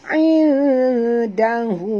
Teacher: Nun mati bertemu dal. Sorokkan bunyi nun ke dalam dal. Disertai dengung. Dua harakat. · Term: Ikhfa haqiqi